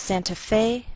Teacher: We place the most stress on Fe. That's our primary stress.